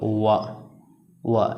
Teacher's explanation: वा वर्ण का उच्चारण स्थान देखो, बोलो वा यानी दांत और ओंठ दोनों की सहायता से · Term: दंतोष्ठ